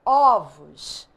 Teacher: quando você pronuncia no plural o som Muda então a gente chama isso de metafonia mudança de timbre no singular o som é fechado ovo no plural o som